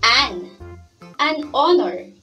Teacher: the word hourglass honor starts with a consonant letter h but when we pronounce the word honor we cannot hear the sound of h